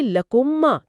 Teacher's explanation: آپ اسے لکم اور ما الگ الگ نہیں بلکہ لکما کی طرح ایک ہی گونجتی بھی آواز میں پڑھیں گے۔ ہونٹ بند ہے اور آواز ناک سے گونج رہی ہے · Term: ادغام شفوی